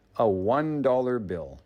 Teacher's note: the word one is pronounced with a W sound, which is a consonant.